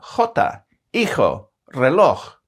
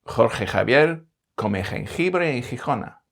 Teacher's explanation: Spanish has some interesting and quite unexpected sounds for a European language, like the velar fricative /x/ sound in jota, hijo, reloj.